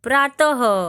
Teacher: अह बोलते समय अक्षर के अंत में ह की ध्वनि आती है। इसका चिन्ह 2 बिंदु होता है। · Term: विसर्ग